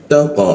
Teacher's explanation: gigi bertemu ujung lidah